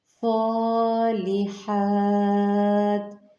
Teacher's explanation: لام کو صاد کے ساتھ ملائیں گے، صاد مستعلیہ حرف ہے جبکہ حا آگے سے باریک پڑھا جائے گا۔